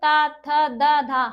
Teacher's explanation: हमारी जो जीभ है वो हमारी दांतों को छू रही है। दांतों को टच कर रही है।